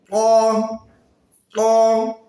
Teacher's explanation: জিহবার গোড়ার সাইডটি একটু মোটা করে উপরের দিকে উঠবে ত ত র জিহবার আঘাত সামনের উপরে দুই দাঁতের আগার সঙ্গে